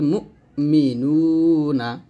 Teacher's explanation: হামজা সিফাতের সাদিদা আওয়াজ শক্তভাবে বন্ধ করে সাদিদা করে পড়তে হয়। যেমন এখানে বলতে হবে বা হামজা জবর বা, বা বা, এরকম ধাক্কা দিবেন এবং শক্ত করবেন, তবে বা আ এরকম উচ্চারণ করবেন না, ডাবল শব্দ করা যাবে না।